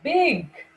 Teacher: learned that in order to make the sounds bur and fur both the lips are brought together and then we release the sound of air